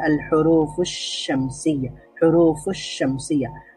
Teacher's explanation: যেমন হুরুফুশ শামসিয়া, এখানে শিনের আগে আলিফ আর লাম ছিল, আমি এই আলিফ আর লাম পড়িনি, আমি পড়েছি আল হুরুফুশ শামসিয়া, হুরুফুশ শামসিয়া। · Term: হরুফুল শামসিয়া